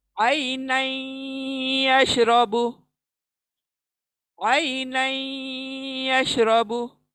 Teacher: दो अल्फाज अगेन आए हुए हैं, आइनन और यशरबू, आइनन यशरबू। तो आइनन का नन का नून जो है हम या में मिला देंगे, इदगाम कर देंगे